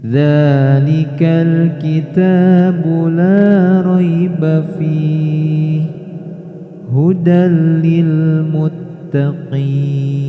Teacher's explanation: Dza ada alif berdiri maka dibaca 2 harokat. Nah, hati-hati ketika membaca dzalikal, jangan sampai ada letupan atau pantulan.